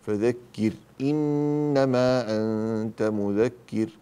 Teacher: فإذا وجدت النون التي عليها شدة في إنما ماذا نفعل فيها؟ غنى